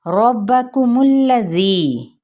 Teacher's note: را کی زبر کو با کے ساتھ اور با کو سختی سے ادا کرتے ہوئے اس حرکت کو یعنی زبر کی حرکت کو لمبا نہیں کریں گے